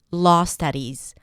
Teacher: I rounded the lips just a bit, but my mouth was very open for both. The tongue is relaxed and pulled back just a bit.